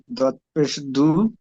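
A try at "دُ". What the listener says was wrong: দদ নয়, দাল, দাল। দাল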